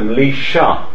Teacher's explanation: So if you have a word like Melitha, this turns into Melisha. You get the development of this sort of palato alveolar sh. But this only affects the unvoiced th.